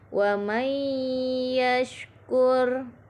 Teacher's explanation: Pada ayat 11 terdapat bacaan idgham bi gunnah, yaitu pada bacaan wa may yashkur. Di sini nun sukun bertemu huruf ya, dibaca idgham bi gunnah.